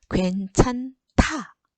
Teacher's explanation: 히읗과 디귿이 합쳐져서 거센 소리로 변해요.